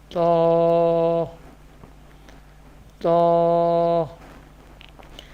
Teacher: This letter pronounced from the tip of the tongue and the roots of the upper front teeth